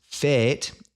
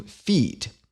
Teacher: this word is pronounced fet in Middle English and when the Great Vowel Shift occurs it gets raised to feet